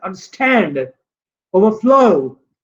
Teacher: जो compound words हो और वो उनकी क्लास हो verbs, the stress is on the second part